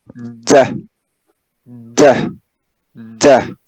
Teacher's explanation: Remember that da is an alveolar sound · So the tip of the tongue touches the alveolar ridge.